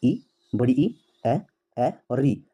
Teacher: इन स्वरों को जीभ के अगले भाग से बोला जाता है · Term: अग्र स्वर